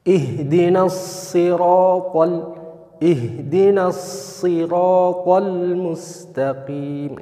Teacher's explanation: ketebalannya itu semakin sedikit atau berkurang ketika berharokat kasroh, tapi tetap tebal karena dia huruf isti'ala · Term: huruf shad